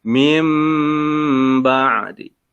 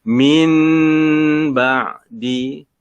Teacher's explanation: Nun mati bertemu huruf ba. Maka huruf nun mati ini ditukarkan dengan huruf mim.